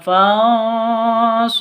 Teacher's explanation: Nun sukun bertemu dengan shad atau nun mati bertemu dengan shad, samar didengungkan. Fansurna, roknya tebal, na panjang 2 ketuk atau 2 harokat.